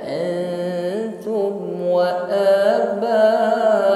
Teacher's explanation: nun sukun samarkan pada huruf ta